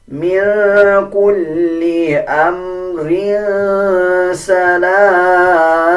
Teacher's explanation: جب وقف کیا جائے گا تب را کو پر یعنی موٹا پڑھا جائے گا اور دونوں زیر کو سائلنٹ کر دیا جائے گا